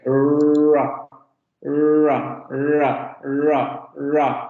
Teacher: Ra. Vean cómo lo que hace la lengua es que sube hacia la zona de los postalveolos, pero no la toca, simplemente se acerca y luego se echa un poco hacia atrás. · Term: aproximante alveolar sonora